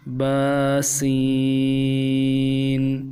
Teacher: سین کو ادا کرتے ہوئے سیٹی ضرور نکالیں گے۔ یہ سیٹی والا حرف ہے تو سیٹی ادا ہوگی با سین۔